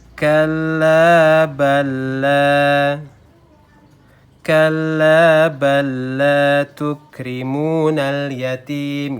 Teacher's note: Jadi bacanya langsung kita lebur ke huruf lam kedua, ya. Tidak boleh ditahan lama-lama. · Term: idgham mutamatsilain